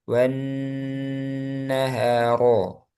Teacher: Nah, ro di sini pak tebal. Ro ketika fathah itu tebal. Jadi teorinya di sini ro tebal.